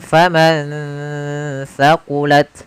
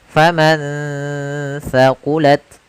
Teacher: ada nun sukun bertemu dengan huruf tha, maka nunnya disamarkan ke huruf tha. Faman thaqulat, sambil ditahan gunnahnya.